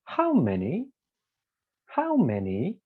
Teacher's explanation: for the falling one we say how many how many start from the top go down